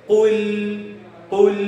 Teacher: நாவினுடைய இரு ஓரங்களையும் சேர்த்து வைத்து அங்கே முரசுடைய இடத்திலே வைத்து நாங்கள் லாமையை சொல்லுவோம். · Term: லாம் என்ற எழுத்து